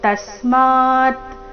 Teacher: ತಸ್ಮ ಆದ ನಂತರ ಅರ್ಧ ತಕಾರ